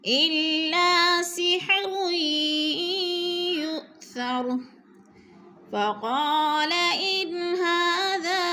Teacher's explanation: نون ساکن کے بعد ہا حروف حلقے میں سے ہے تو ادھر اظہار ہوگا، اخفا نہیں ہوگا